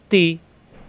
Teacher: জিব্বার আগা উপরে দুই দাঁতের গোড়ায় নরম করে, তাজের তি, কোনো চাপ নাই, পাতলা, তাজের তি।